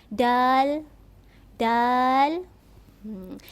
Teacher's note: Huruf dal, lidah kita tu mestilah berada di hujung gigi belakang.